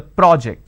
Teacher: when i'm stressing on the first syllable it becomes a noun